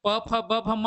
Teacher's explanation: प वाले जो वर्ग प फ ब भ म, वो सारे ओष्ठ्य से होते हैं। प वर्ग यहाँ पर उपस्थित था तो ओष्ठ वाला आपका आंसर होता, सीधा ओष्ठ वाला आंसर होता।